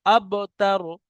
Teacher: বার উপরে সাকিন, বা কলকলা